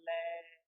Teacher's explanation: जो स्वास वायु है जिभ्या के दोनों साइडों से निकल जाती है बगलों से तो उसे पार्श्विक व्यंजन कहते हैं